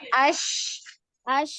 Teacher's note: makrajnya di tengah lidah ya Ada penyebaran udara